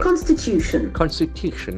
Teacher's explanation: See the accent falls on the third syllable.